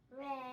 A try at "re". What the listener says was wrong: I think your voice is a little too low. I think you're still singing Do or maybe Do sharp. So let's try hitting Re together. Re.